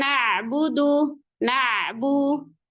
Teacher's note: Ada huruf ain. Alirkan sedikit suaranya. Nggak boleh sampai putus. Karena huruf ain punya sifat namanya bainiyah.